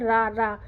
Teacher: रा को करो तो जीभ थोड़ा घूम जाती है नीचे की तरफ, तो इसीलिए ये लुंठित वर्ड है। · रा मतलब ये घूम जाता है, रा थोड़ा फड़फड़ा के निकलता है ना